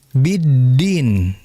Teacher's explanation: Dan untuk huruf dal ini yang harus kita perhatikan adalah jangan sampai jarayanu an-nafas. Jangan sampai dalam pengucapan huruf dal keluar udara.